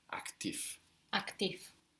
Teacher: the V becomes an F